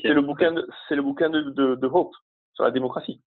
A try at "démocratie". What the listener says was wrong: Démocratie, je crois que tu disais démographie.